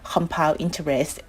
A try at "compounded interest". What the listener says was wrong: A little trouble with that word compound or compounded interest. I would probably say it like that. Compounded interest that is compounded on a monthly, yearly basis. So put the ED on it. I think it'll make it a little bit better. You have that diphthong, ow, compounded.